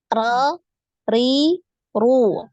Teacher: hanya lidah lidahnya saja ya jadi diusahakan untuk lidah eh apa bibir bawah ini tidak gerak karena dia bukan huruf dari bibir ya tapi dari lisan ya lidah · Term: huruf ro